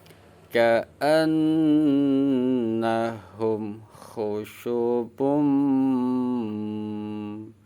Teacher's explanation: mim sukunnya dibaca jelas dalam ilmu tajwid hukum bacaannya izhar syafawi